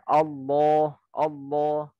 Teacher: Kalau Allah ya lamnya dia taglid dan hamzanya harus jelas, gak boleh ikut tebal. · A-nya itu tipis, baru lamnya namanya lam taghlid, tebal.